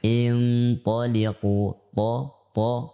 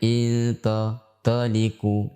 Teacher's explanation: Ditinjau dari pangkal lidah, maka huruf ta termasuk huruf isti'la atau huruf tebal. Sehingga kita membacanya dengan tebal, ya, bukan dengan tipis.